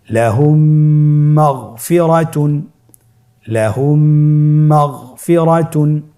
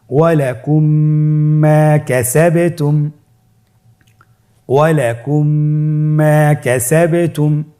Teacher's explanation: মিম সাকিনকে পরবর্তী মিমের সাথে মিলিয়ে পড়তে হবে গুণনার সহিত।